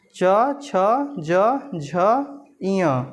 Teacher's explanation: तालु और जीभ के स्पर्श से बोले जाने वर्ण। इसमें क्या होता है, तालु और जीभ का स्पर्श, यानी जो हमारी जीभ होती है वो तालु को स्पर्श करती है तब यह वर्ण उच्चरित होता है। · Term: च वर्ग, तालव्य